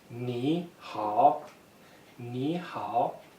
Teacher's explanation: both have the third tone descending rising